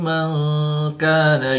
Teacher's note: نون ساکن کے بعد کاف حروف اخفا میں سے ہے تو یعنی یہاں پہ اخفا ہوگا یعنی غنہ زمانی کر کے پڑھیں گے